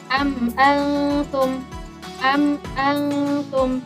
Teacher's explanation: Jadi ee mimnya dibaca jelas. tidak dengung dan tidak gunah.